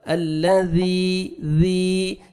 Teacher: نرمی سے ادا ہوئے گا ذال، الذی، ذی، یا مدہ ہے، ذال کو آپ نے 1 سیکنڈ کھینچنا ہے 1 الف کے برابر